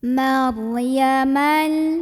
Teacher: Ro tafkhim karena ada ro sukun sebelumnya fathah cara membacanya ditebalkan Mar diangkat pangkal lidah kita maryaman [Musik] ada alif lam qamariah